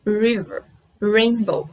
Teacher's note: a língua ela fica mais para trás na boca e você enrola a língua quase encostando a ponta dela no céu da boca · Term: som arredondado